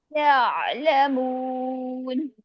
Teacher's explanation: عین میں گلا گھونٹی آواز نہیں لانی ہے